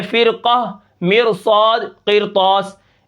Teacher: را ساکن ہے پیچھے زیر ہے، ٹھیک ہے، اور آگے حروف مستعلیہ کا حرف آ گیا ہے تو پھر ہم اس را کو موٹا ہی پڑھیں گے